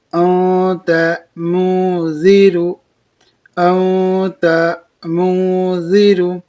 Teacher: نون ساکن کے بعد حروف اخفا کے 15 حرفوں میں سے تا یا اسے اخفا ہوا، اور اخفا کو ایک الف کے مقدار ناک میں گنگنا کر پڑھیں گے۔